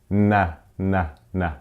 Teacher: É a língua que sobe atrás dos dentes e encosta na gengiva.